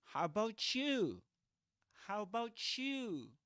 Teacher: So you get ch. T plus ya become ch.